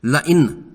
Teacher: نون ساکن کے بعد حمزہ مفتوح حرف حلقی ہے، قاعدہ کے بموجب اس نون ساکن پر اظہار ہوگا اور نون کی آواز خوب ظاہر کر کے ادا کریں گے